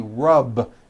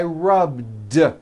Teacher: the word rub ends with a voiced B.